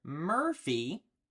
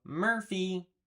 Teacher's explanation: you can hear that that R sound that R is kind of built into that vowel